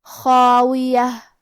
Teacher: کلمت خاویہ میں خا کے بعد مد الف ہے، تو کیونکہ خا حروف تفخیم میں سے ہے تو ہمیں یہ دونوں حرف کو موٹی آواز میں پڑھنا ہے